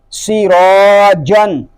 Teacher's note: یہاں اس کلمے میں سین اور جیم جو ہے یہ حرف مستفلہ میں سے ہیں، یعنی ان کو ہم باریک پڑھیں گے. را کو پر پڑھیں گے کہ را کے اوپر زبر آ گیا ہے، اور الف بھی پر پڑھا جائے گا کیونکہ الف سے پہلے پر حرف آ گیا ہے.